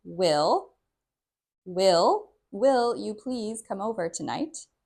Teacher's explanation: This is a question, so the stress is a little bit different. You'll notice we stress the first word